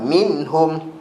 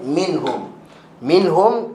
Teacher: Nun dengan mim mesti keluar daripada hidung tutup hidung memang tak jadi Oke maka perlukan hidung so dengung ada tapi dia naqis naqis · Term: dengung naqis